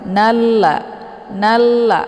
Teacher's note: cara bacanya nunnya dileburkan ke dalam huruf la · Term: Idgham Syamsiah, idgham syamsiyah